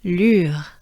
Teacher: So again, droopy face. Sustain the U a little bit, and that's how we pronounce this name.